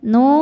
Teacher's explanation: Cara bacanya panjang dua harakat. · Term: mad thobi'i zohiri